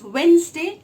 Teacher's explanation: The D is always silent in Wednesday.